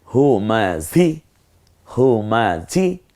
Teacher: আর এই হটা কণ্ঠনালীতে ছেড়ে দিয়ে ঝটা একটু ঝি ঝি আওয়াজে হবে।